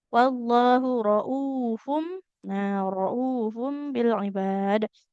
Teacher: Damah bertemu wau panjang juga dua harakat ya